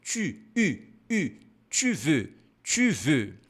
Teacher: Como fazer esse biquinho? Você vai falar a vogal I e, ao mesmo tempo, fazer o biquinho.